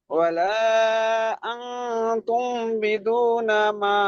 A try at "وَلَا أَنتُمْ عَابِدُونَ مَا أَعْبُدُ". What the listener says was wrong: ওয়ালা আনতুম আবিদু, আইনটা ছেড়ে যাচ্ছে, আটা ছেড়ে যাচ্ছে, আবিদুনা মা আ'বুদু। আবিদুনা, হ্যাঁ আইনটা আবিদুনা। মা আ'বুদু। ওয়ালা আনতুম আবিদুনা মা আ'বুদু।